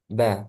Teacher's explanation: sampai terakhir 2 3 A i u U a a u an a na minal mni ma i an a ni a nam sekarang huruf ba dia makhnya keluar dari kedua bibir Asyafatain bibir atas sama bibir bawah menutup rapat